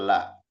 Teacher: Makhrajnya huruf lam ini tepi lidah bagian depan dengan gusi atas. Ya, tepi lidah bagian depan dengan gusi atas.